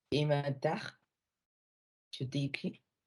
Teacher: La mayor fuerza de voz recae en la penúltima sílaba. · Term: acento grave